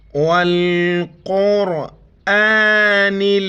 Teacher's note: بڑی قاف ہے موٹا کر کے را کے ساتھ ملائیں گے